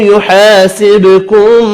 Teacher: با ساکن پر قلقلہ کرنا ہے۔ میم کا اخفا ہوگا، اللہ کا نام زیر کی وجہ سے باریک پڑھا جائے گا، ہا ساکن پڑھیں گے وف کی صورت میں۔